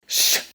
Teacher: la sh se pronuncia con la lengua recta y más cerca de los dientes. Sh. Y ya para acabar de rizar el rizo, la sh se pronuncia con una cierta constricción, con una cierta presión sobre el conducto de aire.